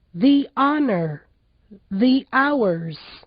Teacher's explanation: em palavras em que o H no início da palavra não é pronunciado, o E do the também tem som de I